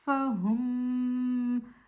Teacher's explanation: میم ساکن کے بعد میم متحرک آئی تو میم ساکنہ کو میم متحرک سے ملا کر مشدد ادا کرتے ہیں اور حرکتین مقدار غنہ بھی کرتے ہیں